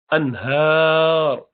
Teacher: اب یہ جو نون ساکنہ آیا ہے اس کے بعد ہا ہے، ہا حروف حلق میں سے یہاں پر اظہار ہوگا، نہ لمبا کریں گے نہ ناک میں زیادہ گھمائیں گے. انہار، ہا کے بعد الف بھی ہے، کھڑا زبر کی شکل میں آپ کو نظر آ رہا ہے.